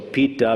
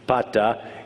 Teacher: Since the last vowel is ah, it tends to change the vowels in front of it to ah.